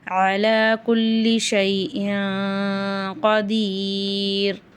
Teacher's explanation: குல்லி ஷைன்ல தன்வீன்க்கு அப்புறம் காப் இருக்கு இங்க இஹா உடைய சட்டம் வரதுனால நம்ம குன்னா செஞ்சு ஓதணும்